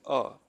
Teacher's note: without modifying at the level of lips, at the level of tongue, anything, just the whole passage is fully open and the sound is continuously coming, so that is a.